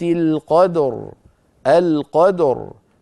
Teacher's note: فاتي براء صوتها ضعيف ومرققه بخلاف ما لو وقفت عليها بالسكون فتصير الراء ساكنه وقبلها ساكن وقبله مفتوح اذا مفخمه